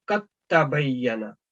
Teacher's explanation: ये देखें, ये लिख के बताया हुआ कि ये देखें कि वो दाल बिल्कुल इग्नोर हो गया यहाँ पे, अपने अपने बजाय देखें कद तबय्यना, लेकिन जब आपने इसको इकट्ठा पढ़ना है बस मिला के पढ़ना है तो कद तबय्यना दाल बिल्कुल इग्नोर कर देना, आपने उसको तलफ़ुज़ में अदा नहीं करना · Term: इदगाम